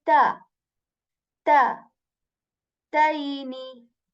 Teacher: Karra, karrataini. Okay, so this ta is articulated when the tip of the tongue, it touches the back of our upper teeth very lightly